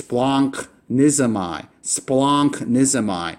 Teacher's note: The first gamma is always pronounced with an N sound, and then you pronounce the second letter as it's normally pronounced in the alphabet.